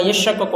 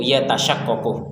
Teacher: Fihi idghamut ta fil asal fisyin. Jadi asal katanya itu yatashaqqaqu, kemudian tak dimasukkan ke syin menjadi yashaqqaqu.